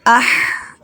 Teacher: اب دیکھیں جیسے حمزہ ہا زبر اح، حلق میں جا کے آواز رکی تو یہ ہا جو ہے حلق سے ادا ہوتا ہے